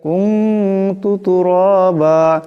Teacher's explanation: এখানে নুন সাকিনের পরে তা আসছে তাও ইকফার হরফ এখানে ইকফার এক আলিফ পরিমাণ গুণ্য হবে